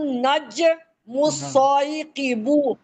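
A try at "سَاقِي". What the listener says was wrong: سائقی بو کیوں؟ سا الف زبر سا قاف زیر قی. ساقیبو ہے.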